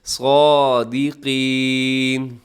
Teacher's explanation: صاد کو موٹا رکھیے گا اور قاف کو بھی موٹا رکھیے گا